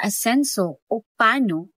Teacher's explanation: At ang panghuli ay ang glal stock na gaya ng pagbigkas sa asenso o pano, may saglit na paghinto sa hangin sa lalamunan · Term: glottal stop